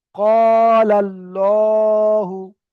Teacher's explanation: লাম খাড়া জাবার, এখানে লা, লাম খাড়া জাবার লা তো হয়, কিন্তু এখানে আল্লাহ শব্দের লাম মুসাদ্দাদের ডান দিকের অক্ষরে জাবার এসেছে, তাই এখানে লাম খাড়া জাবার লা হবে না, লাম খাড়া জাবার ল হবে। · আল্লাহু শব্দে লাম মুসাদ্দাদের ডান দিকের অক্ষরে জাবার এসেছে, তাই আল্লাহর লামকে পুর করে পড়তে হবে।